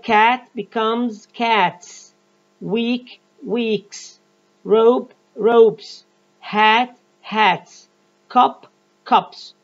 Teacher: all of the singular nouns in this group ends with a voiceless sound · pronounce the S morpheme ending as sa after voiceless sounds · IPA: /s/